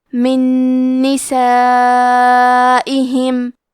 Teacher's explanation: ہم نون ساکن کو دوسرے نون میں ملا کے ایک ہی نون غنہ اور تشدید کے ساتھ پڑھیں گے. من نسائہم. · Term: ادغام